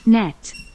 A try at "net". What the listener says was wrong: 이상한 소리로 네이트처럼 들리는데 net